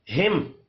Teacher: میم ساکن کے بعد حمزہ آ رہا ہے اظہار شفی ہوگا غنہ نہیں کرنا